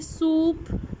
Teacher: ठीक है, अब बोले सूप, या आप बोले फिट, या बोले पिन. ठीक है, इन सब में आपकी टंग जो होती है वो हाई पर होती है, तो इनको हम सबको कहते हैं ये हाई वाउल्स हैं